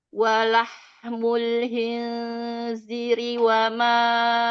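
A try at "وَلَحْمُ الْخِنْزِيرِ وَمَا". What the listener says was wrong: Khinziri. Z-nya panjang ada mat.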